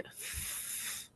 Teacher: Eh, la F, por ejemplo, también es sorda, porque si yo pronuncio la F, no suena, no vibra nada. Digo F, no vibra mi nada en mi garganta.